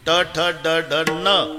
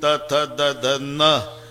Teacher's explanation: ट ठ ड ढ न, दाताशी संबंध नाही. त थ द ध न, दाताशिवाय उच्चार नाही